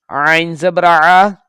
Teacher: عین کو حلق سے نکالنا ہے، اگر ہم عین کو صحیح ادا نہیں کریں گے تو یہ حمزہ کی آواز پیدا کرے گی